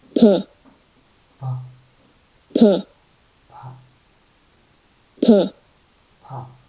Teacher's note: the lips are brought together to obstruct the oral cavity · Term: consonant P